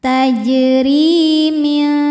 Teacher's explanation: Ri mad tabi'i dhahiri karena ada ya sukun didahului baris kasroh, maka huruf ra panjang 2 harokat